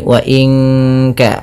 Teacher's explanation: nun mati bertemu Kaf suaranya disamarkan ke Kaf ya terdengar bunyi wa Inka langsung kepada makhraj huruf ka yang